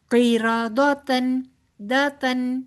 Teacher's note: قاف موٹا را بھی پر دال باریک